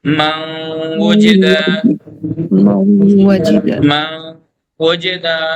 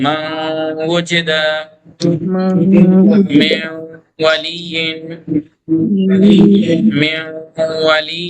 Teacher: نون کو واو میں ادغام تو کیا لیکن غنہ کے ساتھ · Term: ادغام غنہ